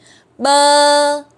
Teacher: bơ hai cái môi mình đọc chữ bờ của mình cũng môi mình cũng chạm vào nhau và bật ra thôi